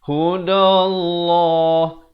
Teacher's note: Di sini kena baca nipis lafzul jalalah. Di sini lafzul jalalah perkataan Allah kita baca tebal